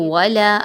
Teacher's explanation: الف مدہ 1 سے 2 الف کے برابر لمبا کریں گے